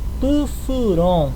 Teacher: A sílaba mais forte é a última. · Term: oxítona